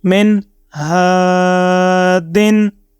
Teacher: تو جیسے ہم نے یہاں پر آپ دیکھیں کہ ہا زبر الف، ہا کو سٹریچ کر کے لمبا کر کے ریڈ کیا ہے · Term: حروف مدہ